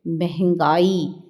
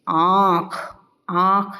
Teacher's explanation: अनुनासिक जो होता है चंद्रबिंदु अभी हमने देखा था अनुनासिक मतलब चंद्र बिंदु इसके उच्चारण में हवा मुंह और नाक से बाहर निकलती है